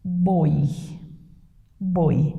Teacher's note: Então, este O é fechado.